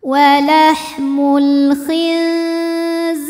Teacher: Sebab ada ya sukun yang sebelumnya berbaris kasroh, maka dibacanya panjang 2 harokat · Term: matobi'i